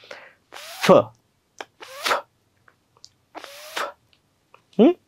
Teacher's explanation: खालचा ओट वरच्या दाताला अस चिकटवायलो आणि फक्त फुपसातून हवा बाहेर टाकायलो असा आणि हे करत असताना इथ इथ व्यब्रेशन जाणवणार नाही असं